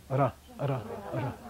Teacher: That's not how an R is made in Tibetan. It's always a tongue on the palate rolling.